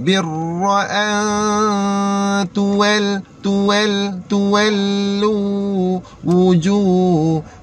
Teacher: B senyum, lepas tu ra berbaris fathah, muncul mulut balik. Ra tu tebal tu. Jangan baca birra, bukan birra. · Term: ra tebal